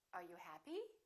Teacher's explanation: with yes no questions the intonation goes up